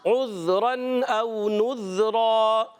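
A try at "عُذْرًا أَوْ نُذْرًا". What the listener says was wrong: ذال کو ہلانا نہیں ہے، عذرا او نذرا،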